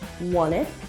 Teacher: fr's words float into each other when he says want it instead of pronouncing the T in want the sound is silent and the two words join together